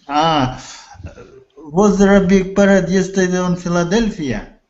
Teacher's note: Remember intonation at the end. It's a yes or no question. So intonation goes up.